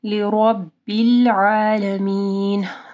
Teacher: را کے اوپر زبر ہے، را موٹی پڑھی جائے گی